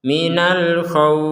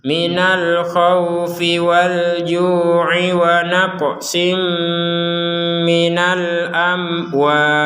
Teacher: Perhatikan untuk panjang dari kata al-khawf ini barusan kita panjangkan sampai 6 harokat.